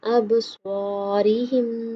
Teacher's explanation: سواد موٹا پڑھیں گے منہ گول کر کے۔